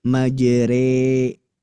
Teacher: Maksudnya gini, majroha dibelokkan jadi e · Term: ro imalah